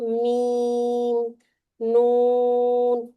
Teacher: گول کر لیں باؤ پہ، نون نون جب ادا کریں نا، نون اور میم ان میں ایک فطری غنہ موجود ہے، یعنی کہ نوز میں یہ آ ہی جاتے ہیں